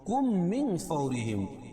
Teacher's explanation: میم ساکن کے بعد میم ہے تو میم کا میم میں ادغام ہوگا، اور اس کو ادغام میں شفوی کہیں گے.